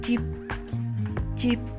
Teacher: در انتهای کلمه صدای ب بسته یا بدون انفجار حالا بسته بدونی انفجار یعنی چی یعنی وقتی اون حرفو تلفظ